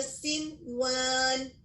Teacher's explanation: ادغام بالغنہ، تو ہمیں مرج کرنا تھا اور غنہ کے ساتھ واو کو ادا کرنا تھا، لیکن اس کے برخلاف یہاں پر ہم واو کو واضح کر رہے ہیں. اور ایک وجہ یہ بھی ہے کہ یہ جو واو آیا ہے وہ ایک ہی لفظ میں آیا ہے، جبکہ ادغام کی شرط ہے کہ 2 الفاظ میں ہو. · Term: اظہار مطلق